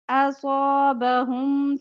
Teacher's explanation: اصابهم صاد موٹا پڑھیں گے